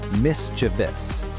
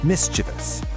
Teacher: There's no I after the V. [music] It's actually only three syllables. The right way to say it is mischievous. The stress is right at the start.